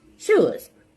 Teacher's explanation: at the palate and it's a fricative set as in shoes this is a voiceless sound it's a palatal sound and it's a fricative sound